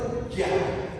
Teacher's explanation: Huruf jim itu di tengah-tengah lidah, lidahnya itu ja.